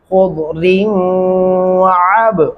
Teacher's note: عین گلے سے ادا ہوگا